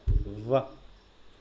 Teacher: যে সাউন্ডটা তৈরি করতে আমার দাঁতও লাগছে আবার ঠোঁটও লাগছে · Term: ল্যাবিয়ন ডেন্টাল